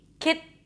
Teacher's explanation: The tip of the tongue goes up for the T, kit, but it's not released. That means you don't hear that pop sound, t, t, all right?